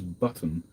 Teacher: American commentators are also doing something when it comes to double T's. They're just missing out the double T's.